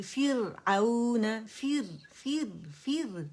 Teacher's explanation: را سکون سے پہلے کسرہ آئے گی تو را باریک پڑ جائے گی